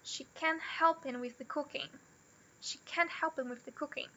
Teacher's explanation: O help é o verbo. É stressed. E o cooking também. Só isso, o resto não.